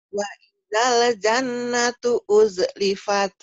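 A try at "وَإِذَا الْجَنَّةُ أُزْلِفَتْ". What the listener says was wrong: kenapa ada masih ada waidale? Ayo, ayo kenapa e-nya le? Ayo, waidal.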